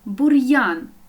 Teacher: ми чітко чуємо твердий приголосний р і далі я позначає два звуки